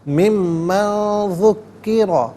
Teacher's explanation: ممن میں نون ساکن ہے، اس کے بعد ذال حرف اخفاء ہے تو نون ساکن کو اخفاء کے ساتھ پڑھا جائے گا۔ ناک میں آواز لے جا کر گنگنانا اسے اخفاء کہتے ہیں۔